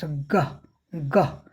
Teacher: ग, ये जो है वायस्ड वेलर, ग वेलर यहाँ काफ़ी जो मुलायम तालु है उधर उसके ऊपर होती है, इसकी आवाज़ पैदा होती है।